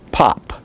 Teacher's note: is pronounced like the p of english the p of pop it is bilabial stop and voiceless